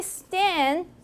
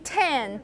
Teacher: can you feel that the T isn't as aspirated